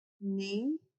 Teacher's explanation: E o M será uma semivogal, porque tem som de I. A gente fala ninguém. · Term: ditongo nasal decrescente